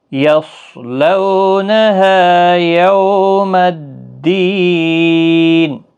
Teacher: یصلو صاد حروف مستعلیہ کا حرف ہے، موٹا پڑھنا ہے